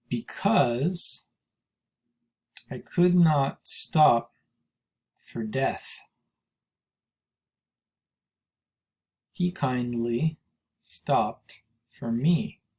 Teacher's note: unstressed stress unstressed stress unstressed stress unstressed stressed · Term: iambic